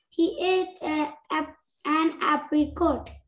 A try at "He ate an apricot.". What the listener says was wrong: Not coat, cot.